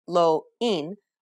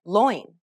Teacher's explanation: to two vowel sounds that are pronounced within the same syllable you can kind of think of it like gliding from one vowel to the next very quickly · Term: diphthong